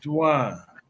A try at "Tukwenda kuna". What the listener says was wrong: But it's T U, huh? W is your U.